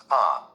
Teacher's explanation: we usually pronounce a and with a weak vowel sound, ah. It sounds like the vowel sound in fun, and not the vowel sound in cat.